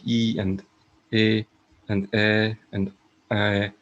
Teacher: sounds like e and a and a and i are towards the front